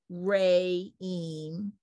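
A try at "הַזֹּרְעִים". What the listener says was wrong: You added an extra vowel. It's ha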